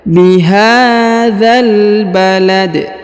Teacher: Perhatikan huruf H dibaca panjang 2 harokat karena di atasnya terdapat tanda alif kecil